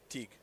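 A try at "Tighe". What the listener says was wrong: Ty. The Ty. They call it Ty. Silent G.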